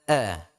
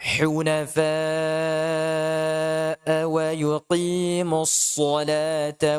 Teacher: a di sini harus jelas hamzahnya